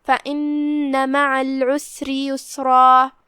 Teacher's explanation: یسرا میں یہاں را پہ زبر ہے، تو یہاں را کا حکم ہے تفخیم، لہذا اسے بھاری آواز میں پڑھنا ہے · را کے نیچے زیر ہے، تو یہاں را کا حکم ہے ترقیق، لہذا اسے پتلی آواز میں پڑھیں گے